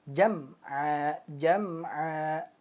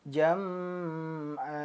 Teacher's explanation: Mimnya jelas. Sukunnya dibaca jam'a, jam'a. Nah, jadi tidak samar atau dengung. Jam'a. Nah, tetapi dia idhar. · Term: idhar syafawi